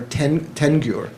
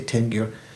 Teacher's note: the la of the last word, like telgyur, is sort of dropped and it becomes nasalized, like tengyur.